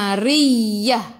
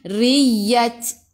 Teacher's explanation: Ingat ta marbutah bila berhenti, bila waqaf bacaannya dia bertukar menjadi ha. Jangan baca ta.